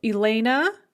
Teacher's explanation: of my first name elena in english or ilyana in russian the ah sound at the end of the name is unstressed in both versions and is pronounced as a kind of an uh or what's called a schwa sound